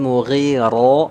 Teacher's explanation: tafkhim tebal ya diangkat pangkal lidahnya